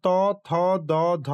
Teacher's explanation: কোনগুলো এখানে উচ্চারণ হচ্ছে না ত থ দ ধ দন্তন্য এবং জেনে রাখা ভালো দন্তস্য একইভাবে উচ্চারণ হয়। জিভার আগের অংশ উপরের দাঁতের পাটিকে স্পর্শ করে যাচ্ছে। দেখুন তচ্চারণ করে জীভের অগ্রভাগ দাঁতের উপরের পাটিকে হালকা করে স্পর্শ করছে। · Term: দন্ত ধ্বনি